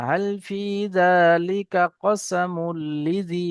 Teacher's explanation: হাল ফি যালিকা, কাফ টান হবে না, হাল ফি যালিকা কসামুল লিজি, লিজি লাজি নাই।